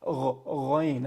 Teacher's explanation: ghayn is at the top of the throat, along with kha